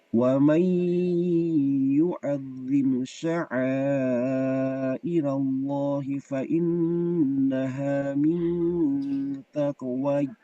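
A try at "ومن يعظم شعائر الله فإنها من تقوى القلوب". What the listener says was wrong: Diulang kembali, wawunya dibaca panjang. Mau nggak mau dibaca panjang wawunya. Karena di depannya itu sudah ada alif maksura. Min taqwa. Itu harus.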